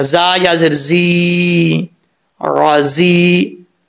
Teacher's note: दोनों जा के अंदर जो है वो सीटी आएगी , ये जा भी सीटी वाला है, ये जा भी सीटी